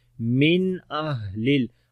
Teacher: نون ساکن کے بعد حمزہ آ گیا تو یہاں پر اظہار ہوگا، نون کی آواز کو ظاہر کر کے پڑھیں گے ، من بغیر غنہ کے، من اہل، ہا کے اندر صفت